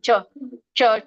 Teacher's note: ಚ ವರ್ಗ ತಾಲಭ್ಯ ಅಂಗಳ ಅಂಗಳದಿಂದ ಬರುತ್ತೆ ನೋಡಿ ಛ ಛ ಛ ನೋಡಿ ನಾಲಿಗೆ ಹೋಗಿ ಮೇಲೆ ಹತ್ತುತ್ತೆ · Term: ತಾಲವ್ಯ